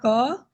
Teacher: अंत में अ निकलता है। यानी उस क में अ मिला हुआ है।